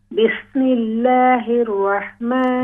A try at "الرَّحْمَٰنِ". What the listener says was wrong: بسم اللہ الرحمن، را کو واو کی آواز نہیں ہونی چاہیے.